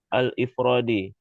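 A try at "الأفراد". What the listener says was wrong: Al-afrodi. Kan hamzanya di atas.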